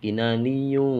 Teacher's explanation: ada tanwin bertemu dengan kaf, huruf ikhfa, maka harus mendengung